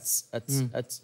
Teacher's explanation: التاء مثلا همسها يختلط بالسين